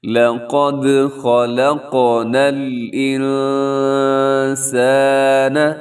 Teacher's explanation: نون ساکن کے بعد سین ہے تو یہاں آپ نے اخفا کرنا ہے، نون کی ادائیگی میں اپنے آواز کو ناک میں رکھنا ہے